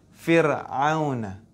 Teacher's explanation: Nah, ini dibaca tipis ro-nya. Fir'auna. Enggak boleh dibaca tebal. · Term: ro tipis